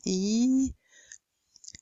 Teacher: Front close, E, the front of the tongue is close to the front of the palate